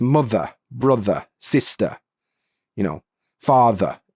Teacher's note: when a word ends in ER. The R disappears and the E becomes a schwa sound